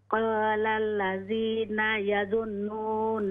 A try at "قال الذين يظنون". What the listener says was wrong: يہاں غنہ کریں نون مشدد ہے يظنون غنہ کیجئے نون میں بھی اور میم میں بھی